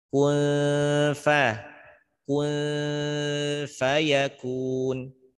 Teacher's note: Baca ikhfa samar, bunyi nunnya ditambah dengan dengungnya, maka dengungkan dan samarkan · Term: ikhfa hakiki